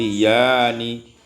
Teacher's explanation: ibdalul hamzati alifan, ditukar hamzah dengan alif maka menjadi yani